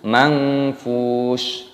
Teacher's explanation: fa-nya dibaca panjang, ada wawu sukunnya, mad tabi'i dipanjangkan 2 ketukan, dan huruf sa-nya di sini dimatikan, mad ta'alilis sukun dimatikan, dibaca mangfush, bukan mangfushi, bukan seperti itu.